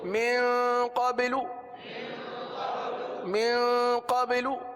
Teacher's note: قبلو کی آواز آ رہی ہے، قبا نہیں ہے، یہ قلقلہ کیا جا رہا ہے